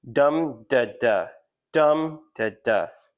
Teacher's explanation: stressed, unstressed, unstressed, stressed, unstressed, unstressed, stressed, unstressed, unstressed.